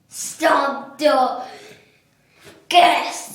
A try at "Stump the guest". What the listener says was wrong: Not stomp the guest. Stump the guest. No, it's not stomp. Stomp. Stump means like you make them, like they don't know the answer to the question. Stomp means like you beat them down, like.